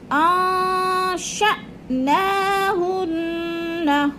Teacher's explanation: اب حمزہ ساکنہ کو جھٹکا دے کے پڑھنا ہے.